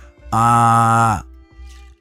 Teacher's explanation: as in father, the most open vowel sound